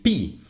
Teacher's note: when you say p you are stopping the air with your lips so it is a labial consonant but the manner of articulation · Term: plosive